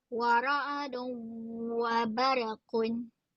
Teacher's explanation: Dan memasukkan tanwin itu dia punya kedengungan itu masuk ke dalam huruf wau. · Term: idgham al-ghunnah